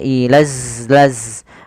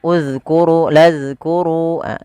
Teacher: Makhrajnya adalah ujung lidah kita menempel dengan gigi sari atas kita. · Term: huruf zal